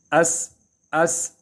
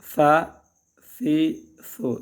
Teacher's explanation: تینوں صورتوں میں اس میں سیٹی کی آواز نہیں آنی ہے. سیٹی کی آواز بالکل نہیں ہے اس میں.